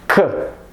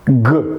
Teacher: K is voiceless. G is more voiced.